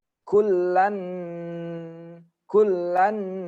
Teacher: tanwin ketemu Nun Nun ini termasuk huruf Idgham Bighunnah maka tanwinnya ini langsung masuk kedalam Nun ya digabungkan